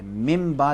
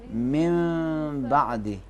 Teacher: اس میم میں ہونٹ آپس میں مکمل نہیں ملائیں گے